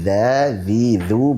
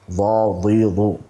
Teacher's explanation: huruf dzal itu memiliki sifat istifal dan infitah, sehingga dia dibaca tarqiq, dibaca tipis